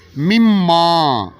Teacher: نون کی آواز ختم اور میم کے ساتھ ادغام